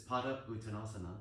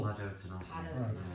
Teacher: and the pada and the u becomes pado. Padottanasana.